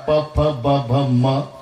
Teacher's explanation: आणि हे म वष्ट स्थानातल अनुनासिक आणि म्हणून वष्ट स्थानातल असल्यामुळे म च्या वेळेला ओटाला ओट लागून तोंड बंद होतं